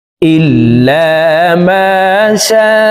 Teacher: এই লামকে ল বলে পড়তে হবে, অর্থাৎ মোটা করে পড়তে হবে, কারণ আল্লাহ শব্দের আগের হরফে জবর অথবা পেশ হইলে এই লামকে ল অর্থাৎ মোটা করিয়া পড়িতে হয়।